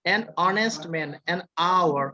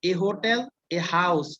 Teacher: এটা কিন্তু এইচটা উচ্চারণ হয় না, এইচটা সাইলেন্ট থাকে, ঠিক আছে, আর অনেস্টের এইচটাও সাইলেন্ট থাকে।